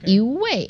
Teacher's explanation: when the second word is the fourth tone, then the first E becomes the second tone.